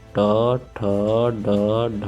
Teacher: तालु के पिछले भाग से उच्चरित ध्वनियाँ तालु से जो उच्चरित होती हैं, और तालु के जो पिछला हिस्सा होता है तो उसको आप लोग मूर्धन्य कह सकते हैं, और बाकी तालु होता है।